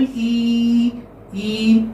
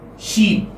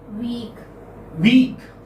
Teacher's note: your lips are spread. So this is front close unrounded vowel.